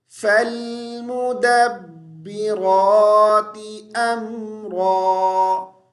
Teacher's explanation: یہاں را کو ہم موٹی آواز کے ساتھ پڑھیں گے